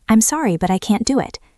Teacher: The T in can't is often held, so it's a short stop.